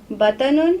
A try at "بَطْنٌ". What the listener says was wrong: نو، تو کے اوپر زبر نہیں ہے، جزم ہے.